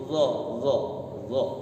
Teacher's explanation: Agak ke belakang sedikit, tidak di ujung lidah. Kalau za kan di ujung lidah.